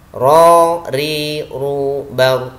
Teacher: Jadi ar, ro, ri, ru, bar tidak disertai nafas. Ro, ri, ru, bar, nafasnya ditahan. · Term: jahr